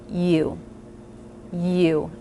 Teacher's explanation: the tongue comes down from the front and lifts in the back and the lips will round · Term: diphthong